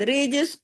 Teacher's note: اس کو جماؤں کے ساتھ نہیں پڑھنا، ہلا کے پڑھنا ہے، کلکلے کے ساتھ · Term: کلکلا